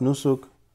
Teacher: we say nusuk without reading the last vowel if we're going to stop